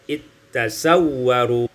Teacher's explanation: Ayat 21, iltasawwaru, idghamul zal fitta, diidghamkan zal pada ta, sehingga kita baca ittasawwaru.